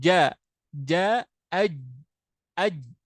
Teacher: Jim itu punya sifat jahar jahar itu tertahannya nafas